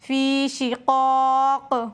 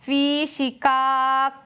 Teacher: قاف بھی حروف مستعلیہ میں سے ہے، موٹا کر کے پڑھیں گے فی شقاق۔ کسی نے اگر قاف کو موٹا نہیں کیا تو پھر یہ والا کاف بن جائے گا، اس کاف کی آواز ہے فی شقاق۔